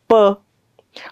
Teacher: दोन ओठानं हवेचा मार्ग बंद केला आणि एका एक स्पोट झाल्यासारखा उच्चार केला